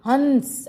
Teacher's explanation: जैसे हंस, ध्वनि आई, ये ध्वनि न तो स्वर की है और न व्यंजन की है, ये स्वरों का गुण है। जब कोई स्वर ध्वनि मुंह के साथ साथ नाक से निकलती है तो इसको क्या कहते हैं, अनुनासिक। मतलब अनु मुंह के साथ नासिका, मतलब नाक से भी जो ध्वनि निकले, हंस।